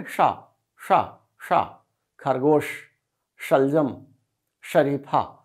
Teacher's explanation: जब हमारी जीभ तालो में टच करती है तब यह बोला जाता है इसलिए इसे तालव्य कहते हैं